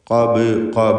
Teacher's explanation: ബായിൻ്റെ സുക്കൂൻ ഖൽഖല സൂറ നൽകി ശബ്ദം ചലിപ്പിച്ച് ഹറക്കത്ത് പോലെ വ്യക്തമാക്കണം.